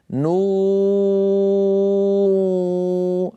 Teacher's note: ونون والقلم نقولها هكذا: نو، بالأول ننطق واو صافية، نو ليس فيها شيء من الغنة أبدا